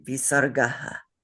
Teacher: It's the two dots after the letter, and it adds a rough breathing sound to that letter. So it is, if we had a visarga on visarga, it would be visargaha.